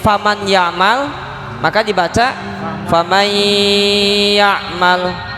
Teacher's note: maka harus disertai dengan gunnah, bigunnah, panjangnya dua harokat.